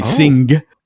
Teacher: in some English dialects in the north north of England you do actually pronounce the the G as in finger. So you say sing.